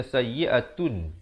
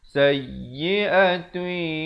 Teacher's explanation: di sini idgham bi gunnah, masuk beserta dengung. Asalnya sayyi'atun, tapi bila datang ya jadi sayyi'atui, dua harakat.